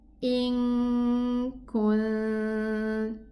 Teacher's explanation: It's ikhfa. I'm gonna hide the nun in behind the kaf.